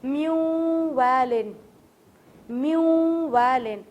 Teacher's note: اب یہاں پہ میم نون زیر من ہے اور پھر والن ہے, لیکن میں نے نون چھوڑ کے واو سے ملا دیا